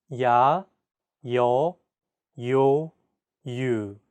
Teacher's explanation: There are also iotized vowel sounds in Korean. This simply means that there's an added Y sound.